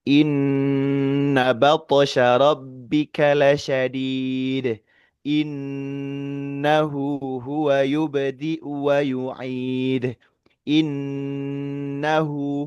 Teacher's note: Itu kalau kita ukur sekitar tempo yang biasa nun tasdid itu sekitar 2 sampai 3 detik.